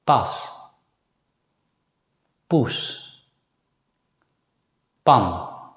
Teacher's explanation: If you put your hand in front of your mouth while saying the word pay, you'll feel a puff of air. But when you pronounce the Dutch consonant P, there should not be a puff of air from your mouth.